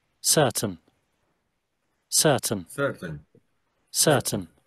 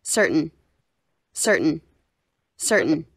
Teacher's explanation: Vocês estão vendo que ele não pronuncia o R, né? Que é a pronúncia britânica